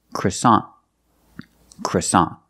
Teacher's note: end the te is a stop te we don't say croissant we put the tongue up and stop the air for that tea